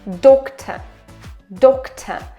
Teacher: And shwa at the end is really nice and open. It's even closer to o.